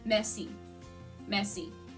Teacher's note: French is a very nasally language. So you're not really pronouncing the R per se. It's very touch and go.